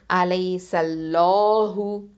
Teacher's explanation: அலை சல்லாஹு, அந்த சீனை வந்து லைட்டாக தான் உச்சரிக்கணும். அல்லாஹ ஹெவியாக உச்சரிக்கும் போது இதில் உள்ள சீனை வந்து லைட்டாக தான் உச்சரிக்கணும்